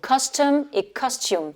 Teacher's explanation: Dans custom, le OM, là, le O, c'est le son schwa. Et dans costume, le U, c'est le son de l'alphabet anglais pour la lettre U, donc le U.